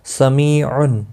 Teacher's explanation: یا مدہ ہے، ایک الف کے برابر کھینچ کر پڑھیں گے۔ تنوین کے بعد یرمل ہلکی عین آیا ہے، اظہار ہلکی ہوگا، گنہ نہیں کریں گے۔